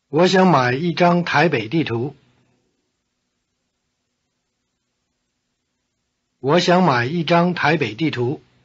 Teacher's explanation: the low tones of 我 and 想 change to rising tone before the low tone of my.